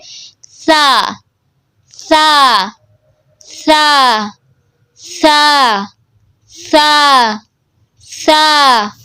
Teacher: اب اس میں آپ نے کیا مسٹیکس نہیں کرنی، اس کو سا کی جگہ سا نہیں پڑھنا، ٹھیک ہے؟ اس میں سختی اور سیٹی نہیں لانی، اس میں نرمی اور باریک آواز میں پڑھنا آپ نے، ٹھیک ہے؟ اس کو زیادہ لمبا نہیں کرنا، ٹھیک ہے؟